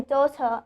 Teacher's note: daughter, I'm not pronouncing the R. Okay, focus on the R's over here as they are at the end and not followed by a vowel.